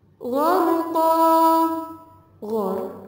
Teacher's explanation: ghor termasuk bacaan ro tafkhim yang dibaca tebal karena didahului tanda baca fathah